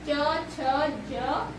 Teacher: तालव्य, तालु से जो साउंड निकलता है यानी कि ध्वनि उत्पन्न होती है उसे हम तालव्य व्यंजन कहते हैं।